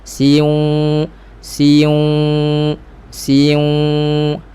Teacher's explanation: huruf sin baris bawah ini satu harakat si cantik dulu, baru masuk waw muncung dan dengungkan idgham ma'al gunnah.